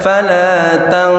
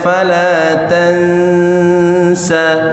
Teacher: nun ketemu sin ikhfa, tahan, tapi jangan tebel